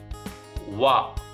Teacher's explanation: ಹಲ್ಲು ಮತ್ತು ತುಟಿಯ ಸಹಾಯದಿಂದ ಇದು ಅಕ್ಷರ ಹುಟ್ಟುತ್ತೆ ದಂತ ನೋಡಿ ವೋ ನೋಡಿ ದಂತ ಮತ್ತೆ ತುಟಿ ಎರಡು ಕೂಡ ಇಲ್ಲಿ ಸ್ಪರ್ಶ ಆಗ್ತಾ ಇದೆ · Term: ದಂತೋಷ್ಠ